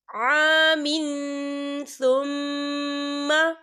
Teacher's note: فاماتہ اللہ مئۃ عام ثم، یہ دیکھیے عام، یہاں میم کے نیچے تنوین ہے اور تنوین کے بعد جو ہے سا آ رہا ہے، اور سا جو ہے اکفا کا ورڈ ہے، تو ہم یہاں اکفا کریں گے، تنوین کی آواز کو ناک میں چھپائیں گے